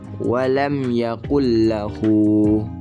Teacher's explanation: idgham bilahuna ini adalah idgham yang dibaca tanpa dengung. Jadi hal ini terjadi jika nun sukun atau tanwin bertemu dengan huruf hijaiyah la atau ro.